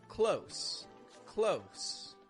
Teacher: Close, as an adjective or an adverb, to be near something, uses a regular S sound on the ending.